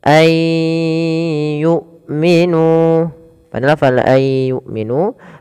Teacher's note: huruf wau ay yumminu pfal ay yumminu tahan suara nunnya Maaf suara nunnya kita masukkan kepada huruf ya Dan kita tahan suara huruf y-nya Ai pertamanya begitu kemudian Langkah kedua ditahan aiu sambil dimasukkan ke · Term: Idgham